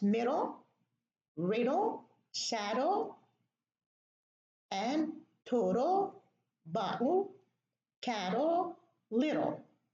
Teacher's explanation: We pronounce the L while the tongue is behind the teeth on the alveolar ridge.